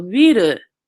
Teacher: in Japanese, we don't really have an L. So we're gonna have a little bit more of an R sound